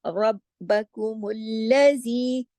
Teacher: رب، اب با پہ دیکھیے تشدید ہے، رب، پہلے رب اور پھر با، با کی آواز 2 دفعہ آنی چاہیے، کیونکہ تشدید جو ہے وہ اسی چیز کا سائن ہے کہ یہ حرف 2 مرتبہ پڑھا جائے گا اور سختی سے جوڑا جائے گا، رب، رب، اس طرح سے، ٹھیک ہے۔ را موٹا پڑھا جائے گا، جبکہ با، کاف، میم آگے جتنا بھی ہے، ربکم الذی، یہ سب باریک لیٹر ہیں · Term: باریک حروف